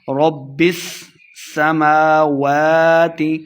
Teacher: میم کے اوپر اور واو کے اوپر کھڑی زبریں ہیں تو یہاں پہ کھڑی حرکات ہے، ہم نے اس کو دو دو حرکات لمبا کر کے پڑھنا ہے